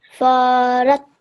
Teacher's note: This is a ra which carries a shadda. This is a mushaddad ra. Okay. And we harden it. We spend time on it.